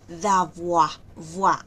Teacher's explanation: lo que aquí hacemos es que la D toma el sonido de la A y decimos d'avoir, voir. Acuérdense del diptongo OI. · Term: contracción